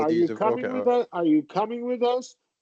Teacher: you're going to end on a high pitch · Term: rise fall intonation